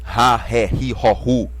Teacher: porque em inglês o H é pronunciado como se fosse um sopro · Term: aspiração forte